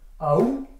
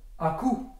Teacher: le K marque un arrêt entre le A et le OU et taille dans la masse sonore. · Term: occlusives